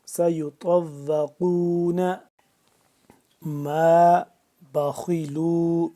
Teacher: طا موٹا یہ قاف بھی موٹا، اس کو بھی ہم نے موٹا پر کر کے پڑھا ہے